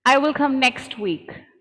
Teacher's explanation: the t sound disappears